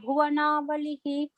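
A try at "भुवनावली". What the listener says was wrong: There is no Visarga after Bhuvanavali.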